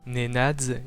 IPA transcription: ne'nad͡z